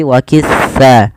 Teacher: Pada lafal sa hati-hati, pertama di dalam melafalkan huruf sa jangan dibaca dengan sa waqissa, tapi waqitha. Ujung lidah kita menempel dengan gigi dari atas agar sesuai dengan makhrajnya.